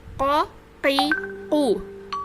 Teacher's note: Pangkal lidah bagian dalam, huruf apa yang berada di pangkal lidah bagian dalam? Yaitu qaf